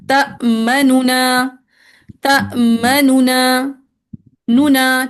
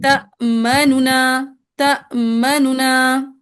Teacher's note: مختصر کر کے پڑھنا۔ سو جو تأمنو کا نون ہے نا، اس کو آپ نے مختصر کر کے پڑھنا ہے